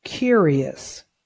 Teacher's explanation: The OUS sound on the end has a schwa sound.